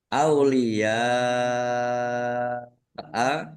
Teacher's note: karena bertemu dengan huruf hamzah dalam satu kata, maka menjadi mad wajib muttasil. Dibaca panjang harus lima harakat atau lima ketukan.